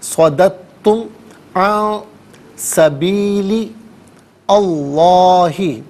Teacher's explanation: تا مشدد ہے، تو اسے ہم جماؤ کے ساتھ پڑھیں گے۔ صَدَدتُّمْ عَن سَبِيلِ اللہ، اللہ سبیلی میں لام کے نیچے زیر ہے، اسے اسم اللہ کے حرف لام کے ساتھ ملائیں گے، درمیان میں سے الف یعنی حمزہ کو حذف کیا جائے گا۔